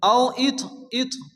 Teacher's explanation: ত সাকিন, ত যেহেতু কলকলার অক্ষর হালকা ধাক্কা দিয়ে পড়তে হবে।